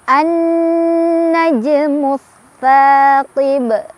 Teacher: Karena ada alif lam bertemu huruf syamsiyah yaitu nun. Cara bacanya alif lamnya tidak dibaca, langsung baca ke nun. Jadi diidghamkan, idgham syamsiyah.